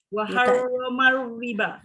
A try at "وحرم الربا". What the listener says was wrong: Dia kalau waharrama riba dia tidak ada takrir. Dia kena takrir bergerak, bergetar.